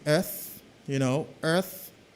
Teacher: So we have a voiceless th here, a voiceless th.